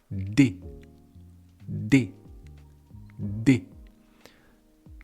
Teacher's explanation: Et après, il faut baisser la langue. Donc, vous mettez la langue sur les dents du haut et vous poussez votre langue. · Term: le D